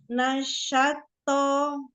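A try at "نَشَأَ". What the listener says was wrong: Nasyako, satu-satu, Nasyako. Ya, jadi dibuka huruf per huruf ya. Nah, bukan nas. Kalau misalnya tertabrak itu bisa salah satu penyebabnya karena kurang dibuka. Kan fathah mulutnya dibuka.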